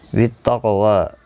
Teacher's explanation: قاف مستعلیہ ہے، پر پڑھا جائے گا، ساکن بھی ہے، اس پر قلقلہ بھی ہوگا، واو کے اوپر کھڑی زبر ہے، ایک الف کی مقدار کے برابر کھینچ کر وقف کریں گے۔